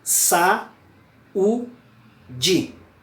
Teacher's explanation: Esse u, ele está recebendo a tonicidade, ele está separado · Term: hiato